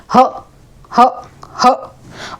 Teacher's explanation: ऊष्म व्यंजन में सबसे ज्यादा ह की साउंड होती है कंठ से